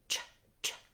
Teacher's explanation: So it sounds like ch, ch. My tongue is dropping, it's pulling back, and that air is being forced out in the ch sound.